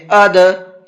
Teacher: دال کے اندر قلقلہ کریں گے، ہلکا سا آواز کو ڈبل کر کے پڑھیں گے، اد، اس طریقے سے۔